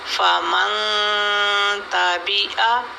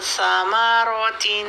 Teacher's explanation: ज़बान नीचे रहेगी और साउंड टोटली नोज़ में चली जाती है, ज़बान उसमें काम नहीं करती, वो नीचे जहाँ पर है वहाँ बैठी रहती है। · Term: इख्फा